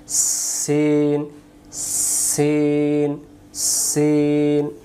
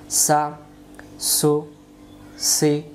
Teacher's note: সিন অক্ষর সামনের নিচের দাঁতের আগা থেকে শিশি দিয়ে পড়তে হয় সিন এমন শব্দ হবে সিন সিন সিন উচ্চারণ সিন জবর সাশ